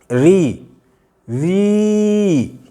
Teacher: अगर आप इसका उच्चारण अगर री कहते हैं और इसको प्लुत करके बोल के देखेंगे तो ई शेष रहती है, री, ई शेष रहती है, मतलब ये, इसका उच्चारण किसी कीमत पर हो ही नहीं सकता।